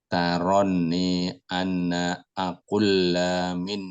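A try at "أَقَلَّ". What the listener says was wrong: Aqalla, fathah nggih. Aqalla.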